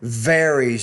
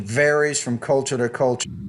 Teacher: need to pronounce that V with more vibration